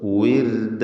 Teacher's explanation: താഴെ ചുണ്ടും മേലെ പല്ലും ചേർത്ത് ഉച്ചരിക്കരുത്. വിർദ, റാഇന് തർക്കീഖാണ്, നേർപ്പിച്ചുകൊണ്ട് റാഇനെ ഉച്ചരിക്കണം. കാരണം അതിന് സുക്കൂൻ തൊട്ട് മുമ്പിൽ സ്ഥിരപ്പെട്ട കസ്റുമുണ്ട് എന്നതാണ്.